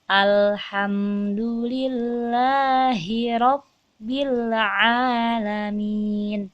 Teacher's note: Lam sukun itu sifatnya ditekan. Jadi ada tekanan sedikit ketika kita membacanya. Nah, tapi jangan lama-lama.